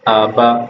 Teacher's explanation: نہ تو میں نے اس کو جھٹکا محسوس ہونے دیا نہ ہی میں نے اس کو زیادہ لیٹ کر پڑھا ہے یعنی کہ مجہول نہیں ہونے دیا.